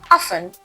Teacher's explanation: In this word, the T is silent.